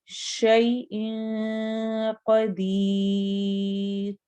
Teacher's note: یا ساکن سے پہلے زبر آ رہی ہے، یا ساکن سے پہلے زیر آئے گی تو یا مدہ ہوگا، تب ہم یا کو لمبا کریں گے. اور قدیر میں اخفا ہو رہا ہے، نون کی آواز کو ہم چھپائیں گے اور آخر میں رو کو باریک پڑھنا ہے کیونکہ اس سے پہلے یا آ رہا ہے.